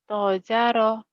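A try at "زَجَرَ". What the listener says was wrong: Za ada titiknya.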